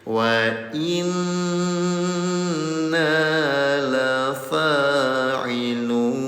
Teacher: Ada nun dalam keadaan tasdid namanya gunah, dengungkan selama 2 harokat.